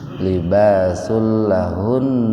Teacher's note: Domatain ketemu dengan lam, jadi membacanya dimasukkan ke lam itu tanpa mendengung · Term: idgham bila guna